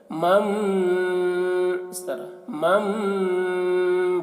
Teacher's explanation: وَأَمَّا مَن، یہاں پر چھوٹی سی میم ہے تو میم کو میم سے ملا کر غنہ کے ساتھ پڑھیں گے، نون کو نہیں پڑھیں گے